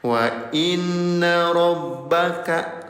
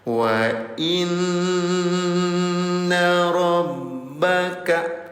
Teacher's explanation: Nun dalam keadaan tasydid, namanya gunnah ayah bunda. Dengungkan cara bacanya selama 2 harokat.